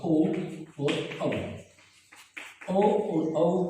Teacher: कंठ और होठ दोनों से ये स्वर बोले जाते हैं, इसलिए इन दोनों स्वरों का उच्चारण स्थान कंठोष्ठ है।